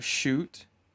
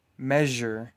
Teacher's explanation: Sh is a voiceless sound. Zh is voiced.